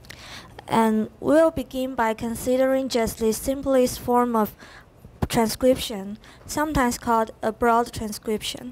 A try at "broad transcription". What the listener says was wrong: Very good. And you didn't say broad, that's good, because a lot of people do.